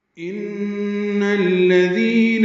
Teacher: ان میں نون مشدد پہ غنہ ہے، ان نون کو الذین کے لام سے ملانا ہے. ان الذین ذال نرمی سے پڑھنا ہے اور ذی یا مدہ ہے، دو حرکات لمبا کرنا ہے.